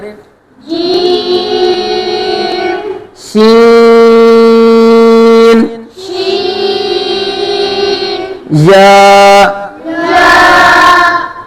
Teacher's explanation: یہ زبان کے درمیان اور تالو کے درمیان سے ادا ہوتے ہیں۔ زبان کے درمیان اور اوپر تالو کے درمیان سے۔ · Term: حروف شجریہ